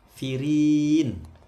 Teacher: Ri panjang ini, rinya ini tipis ya, tarkik karena kasroh.